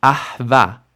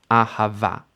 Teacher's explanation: It doesn't like the shva on the guttural, so it changes it to an ah sound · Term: chataf vowels